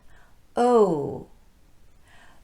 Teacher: so it's o and then it transitions into that tightly rounded ooh shape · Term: long o